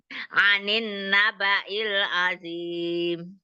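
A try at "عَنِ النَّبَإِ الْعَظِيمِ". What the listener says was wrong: Nah, itu ninnya itu ada nun musyadada. Dia tingkatan gunahnya akmal matamu, jadi agak ditahan lebih paling lama ya.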